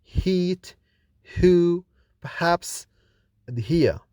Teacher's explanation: H is voiceless when produced alone, but voiced when followed by a vowel. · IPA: /h/